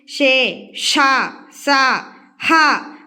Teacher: ఊది పలికే వాటిని ఊష్మాలు అంటారు